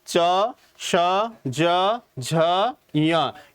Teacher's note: हमारी जो जीविया है वो कहां लग रही है ऊपर तालों में लग रही है इसीलिए इसका नाम क्या रखा है हमने तालू रखा है अब · च वर्ग के च, छ, ज, झ, यानी कि आपके जो जिव्या है, जीभ, वो कहां है, ऊपर के भाग में टच हो रही होगी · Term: तालव्य